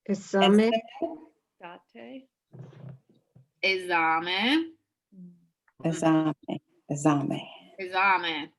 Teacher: So the S has a Z sound to it